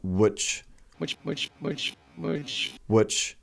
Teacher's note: he's not really pronouncing the I it's just an uh sound